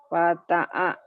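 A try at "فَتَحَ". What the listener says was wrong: Fataha. Ini H.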